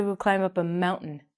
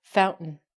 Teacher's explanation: we're gonna take out the t and the a and it's gonna sound like mount in curtain